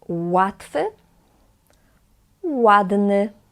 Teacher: This is a letter eł, eł. We pronounce it as w, like English W in the word water